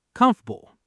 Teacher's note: The middle vowel just vanishes. >> Is this comfortable for you? · Comfortable, then faster, comfortable. The middle vowel just vanishes.